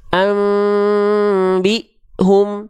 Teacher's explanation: bibir atas dan bibir bawah tapi cuman nempel dikit aja nempel tapi tetap nempel rasakan Ada getaran antara bibir atas dan bibir bawah kalau dia betul-betul nempel kan dia am Enggak kerasa ada getaran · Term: iqlab